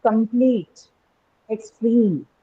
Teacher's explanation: instead of marking the stress on the first syllable as per the rule we have marked it on the second syllable